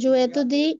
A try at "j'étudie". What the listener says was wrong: étudie, not je étudie, j'étudie, attached, হ্যাঁ, j'étudie বলেন।